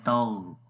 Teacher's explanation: تا کو جب غین کے ساتھ ملائیں گے تو غین کی آواز کو موٹا پڑھیں گے